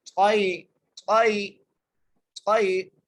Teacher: طا کو یا سے ملانا ہے، طا کو موٹا کر کے پڑھنا ہے. طائی طائی طائی ایسے پڑھنا ہے، بغیر کھینچے پڑھنا ہے.